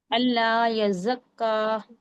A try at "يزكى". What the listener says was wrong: यज़क्का नहीं यज़क्का दोनों पर शद्दा है दोनों को ही हम सख्ती के साथ पढ़ेंगे